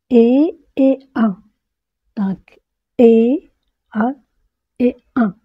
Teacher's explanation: vous devez sentir votre nez vibrer pour un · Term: voyelle nasale